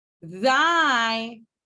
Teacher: Thy, in thy, my tongue is behind my teeth. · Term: dental